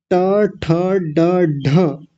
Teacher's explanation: जहां ऊपर जाकर के उस गड्ढे में हमारी जीवा लगती है उसी को मूर्धा बोलते हैं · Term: मूर्धन्य